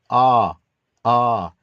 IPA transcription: ɑ